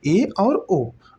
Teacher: अर्धसमृद्ध में क्या होता है, समृद्ध से थोड़ा सा अधिक मुख द्वार खुला हो और विवृत से थोड़ा सा कम मुख द्वार खुला है